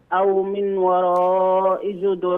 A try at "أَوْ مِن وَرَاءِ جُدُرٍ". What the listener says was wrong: أو من وراء، من وراء، من وراء، لا تنطق النون، أو من وراء جدر،